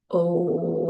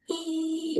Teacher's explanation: if I make the sound, oh, it's a very low, deep sound, right? Versus the sound, ee, which is a very high sound.